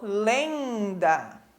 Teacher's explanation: o som fica nasalizado, né? Fica preso no nosso nariz. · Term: vogais nasais